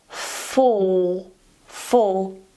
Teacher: the 'Dark L' is held